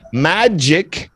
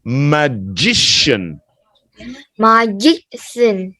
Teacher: that k sound turns into a sh sound · magic there's a k sound when we're talking about the person that turns into an sh there's no k sound magician magician no there's no K in here it's not magic